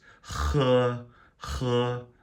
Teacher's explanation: Like you're going to spit. That's what the H is like in Chinese a little bit.